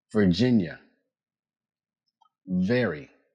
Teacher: Place your top teeth lightly on your lower lip. For V, use your voice.